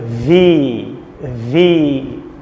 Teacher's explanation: দাঁত আর ঠোঁট, ভি উপরের দাঁত নিচের ঠোঁট